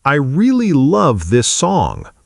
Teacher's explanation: I really love this song with clear emphasis on love and song while I and this pass by much more quickly and softly.